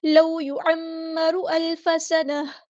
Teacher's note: عین کو وسطی حلق کے تھروٹ سے ادا کرنا ہے. میم پہ غنہ زمانی آ رہا ہے، الف کے برابر ہم رکیں گے.